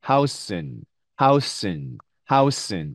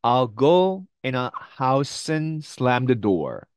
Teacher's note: and 할 때 뒤에 있는 이 d가 네, 앞에 있는 n 발음에 영향을 받으면서 사실 음가가 빠지죠. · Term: n 발음만 받침